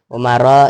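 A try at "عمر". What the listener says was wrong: Umaru, bukan Umaro, kan khobar.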